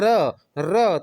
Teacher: व्यंजन के उच्चारण में जीवा की नोक वायु से रगड़ खाकर कांपती हुई रहती है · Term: प्रकंपित व्यंजन